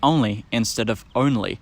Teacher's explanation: as well um they might say only instead of only because the sequence of the vowel o and the letter N has just become one nasalized o